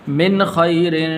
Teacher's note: یہاں پر غنہ نہیں کریں گے اس لیے کہ آگے خا حروف حلقی میں سے ہے